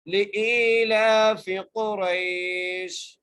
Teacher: حمزہ کو ہم ایک الف کی مقدار کھینچ کر پڑھ رہے ہیں